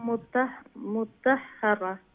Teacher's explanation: দুইটা হা উচ্চারণ করা লাগবে নাইলে একটার উচ্চারণ বাদ যাইব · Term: তশদীদ